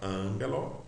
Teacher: Esse gama, quando ele vem antes de kappa, ki ou gama, ele sempre terá o som de N.